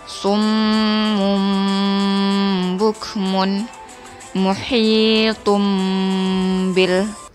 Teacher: mohil tumbil di sini ada tanwin bertemu dengan huruf ba maka cara membacanya bibir atas dan bibir bawah menempel dengan ditahan sekitar dua harokat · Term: iqlab